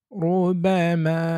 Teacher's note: প্রথমত রা হরফে পেশ বা জবর থাকলে, যেমন রুবামা, অর্থাৎ এখানে রায়ের সাথে পেশ আছে, এজন্য আমরা একটু পুর করে পড়ছি।